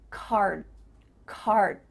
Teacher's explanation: You're not actually making a D sound, but your mouth is making that shape.